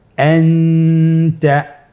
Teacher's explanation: নুন সাকিন অথবা তানবিনের পরে ইকফার 15টি হরফের যে কোনো একটি হরফ আসলে তাহলে নুন সাকিন তানবিনকে নাকের ভিতরে লুকিয়ে গুণনার সহিত পড়তে হবে · তাহলে এখানে আমাদেরকে নুন সাকিনকে লুকিয়ে গুণনা করে পড়তে হবে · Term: ইখফা